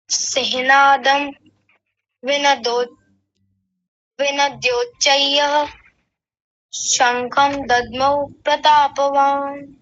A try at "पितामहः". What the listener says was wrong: सबसे पहला तो आप यहाँ देखिए, यहाँ विसर्ग छोड़ दिया था पहली ही पंक्ति में, तो इसको ठीक कीजिएगा। हाँ, अभी जो मैं बता रहा था शायद आपने ध्यान नहीं दिया, तो यहाँ विसर्ग का उच्चारण अवश्य करेंगे। क्या बनेगा? पितामह। हाँ, ऐसा बोलिए।